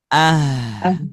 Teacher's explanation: untuk huruf ha ketika sukun otomatis mengalirkan suara karena pita suaranya terbuka